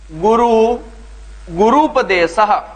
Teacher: जैसे गुरु, गुरु का ऊ ह्रस्व है और उपदेशः, गुरु का जो अंतिम वर्ण है वो ह्रस्व ऊ है और उपदेश का जो प्रथम वर्ण है वो भी ह्रस्व ऊ है, तो दोनों ह्रस्व ऊ मिलकर के दीर्घ ऊ बनाएंगे और ये बनेगा गुरु, गुरुपदेशः। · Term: दीर्घ संधि